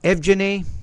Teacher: you got the v and the g together in english we don't really have that consonant cluster